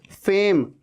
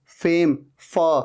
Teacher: ऊपर के दांत नीचे वाले लिप पे आ रहे हैं, टच हो रहे हैं